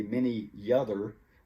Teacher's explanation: the vowel Y at the end of the word produces the consonant Y when it's next to a word that starts with a vowel.